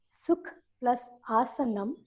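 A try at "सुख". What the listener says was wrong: Sukha, not sukh. Okay.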